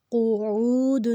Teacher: اب دیکھیں ہم نے اس میں جہاں پہ پیش ہے اور ساتھ آگے واو کے اوپر جزم ہے تو اس کو ہم نے 2 حرکت لفظ کو لمبا کیا ہے۔ قعود، اب قاف جو ہے وہ موٹا ہے، عین جو ہے وہ حروف ہلکی ہے، اس کو حلق سے نکالنا ہے